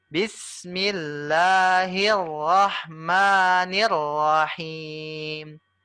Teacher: untuk yang rahim panjangnya 3 sampai 4 harakat